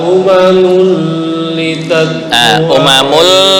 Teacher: umamul ini tanwin bertemu lam itu bacaan idgham bila gunnah